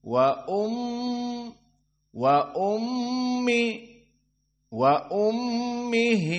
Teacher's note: mim musyaddadah hukumnya wujubul gunah di sini dua harakat dan makhrajnya dari kisum